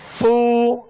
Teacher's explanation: پیش فو اس کو فا کو ادا کرتے ہوئے بالخصوص جب پیش ادا کیا جاتا ہے اور اس میں حرف مد ہوتا ہے تو تھوڑا سا کھینچا جاتا ہے ایک الف کی مقدار میں